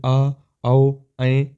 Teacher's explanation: जिन स्वरों के उच्चारण में सर्वाधिक मुख खुलता है उन्हे विवत स्वर कहते हैं